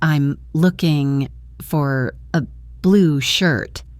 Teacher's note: Here the important stressed words are looking, blue, and shirt. The other words, I'm and for a, are unstressed and spoken quickly.